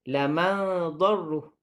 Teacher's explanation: Nun mati bertemu dengan huruf dad. Perlu ditebalkan. Dengung ikhfa'nya ditebalkan.